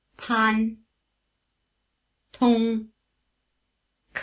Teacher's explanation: front of your mouth while saying pill till kill try it Chinese ptnk sounds are very strongly aspirated